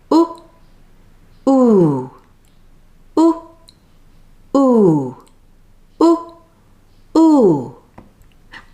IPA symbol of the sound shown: uː